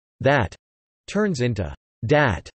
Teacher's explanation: Dental fricatives are usually changed to alveolar plosives, th stopping. · Voiced th becomes d, e.g. that turns into dat.